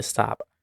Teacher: when you end the word stop, the entire sound gets cut off